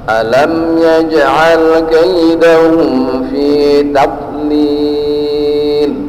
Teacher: Jadi huruf dhad jangan sampai kita pantulkan suara tambahan karena dia bukan huruf qalqalah. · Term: huruf yang tidak memantul